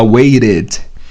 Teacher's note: em inglês americano ele pode virar o som do flap T, que é esse som do R de Sara